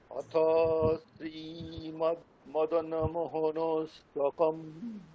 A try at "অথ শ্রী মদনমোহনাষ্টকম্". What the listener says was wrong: আচ্ছা, মোহনাষ্টকম না, মোহনাষ্টকম আকার আছে।